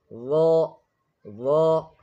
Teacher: ظا is pronounced by placing the tip of the tongue near the edges of the upper teeth with a heavy sound.